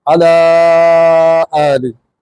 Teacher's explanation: حمزہ آ جائے تو وہی چھوٹی مد 3 سے 4 گنا بڑی ہو جاتی ہے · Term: زیادہ مد